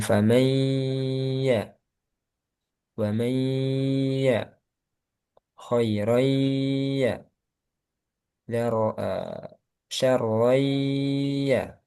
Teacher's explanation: kalau tanwin atau nun bertemu ya, jangan lupa ditahan. Kemudian masukkan ke hidung. Masukkan ke hidung juga sebagian.